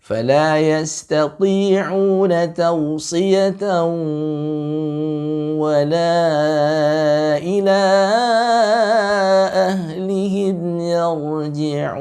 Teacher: Jadi tetap ditahan 2 harokat pada gunnah ya, naqisah, pada idgham bi gunnah. · kita lihat tanwin bertemu dengan waw. Berarti dia keluar lewat khaisum, dia keluar juga lewat al-jauf ya.